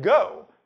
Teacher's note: you make it by raising the body of your tongue to the soft palate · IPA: [go]